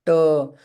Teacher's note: ट का उच्चारण आप ट कीजिए तो लास्ट में अ ही आता है